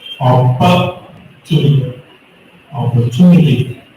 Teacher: The third syllable from the last has to be stressed.